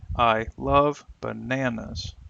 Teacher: love and bananas will receive sentence stress because both have meaning by themselves